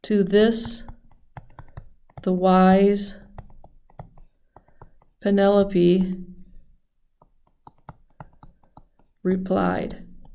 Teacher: This is a line of iambic pentameter. There are 5 repetitions of the iamb.